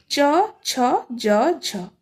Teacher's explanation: तेबे च छ ज झ होची स्पर्श संघर्षी ध्वनि